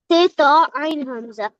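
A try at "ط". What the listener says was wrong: பெரிய துவாவை நான் கொஞ்சம் தடிப்பா உச்சரிக்கணும். பெரிய துவாவை தேயப்போ. அப்பதான் ரெண்டு தாக்கும் வித்தியாசம் விளங்கும். ரெண்டு தா வந்திக்குது அப்படித்தானே? சின்ன தேய் வந்திக்குது, பெரிய துவா வந்திக்குது. தேயப்போ ஐன் ஹம்சா.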